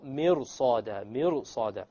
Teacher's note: the ra, when you make it heavy, it makes it easier to pronounce the sad.